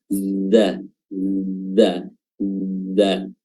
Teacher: za di sini makhrajnya adalah ujung lidah bertemu dengan gigi seri bawah